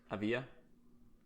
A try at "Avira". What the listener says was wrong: Not Avia. There's an R. It's not an L.